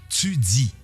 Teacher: Dans un premier temps, l'assibilation, c'est-à-dire le fait de prononcer les consonnes occlusives T et D avec un sifflement ts et z. Par exemple, dans les mots tu dis, prononcé tu dis.